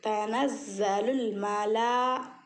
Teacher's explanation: تنزل الملا، لام کے اوپر مد ہے اور کھڑا زبر ہے، اور اسی کے بعد حمزہ آیا ہے اسی کلمے میں، تو یہ مد متصل ہے، اس کو 5 الف کے برابر کھینچیں گے مد کو، اور اس کے ساتھ کھڑا زبر آنے پر اور تھوڑا زیادہ کھینچیں گے۔